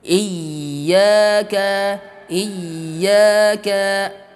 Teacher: ya Nah di sini ada hentakan pada ia tasydid Iya Kak ada hentakan tekanan pada ia bertasydid